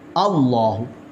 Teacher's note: اللہ کا لام پر موٹا پڑا جائے گا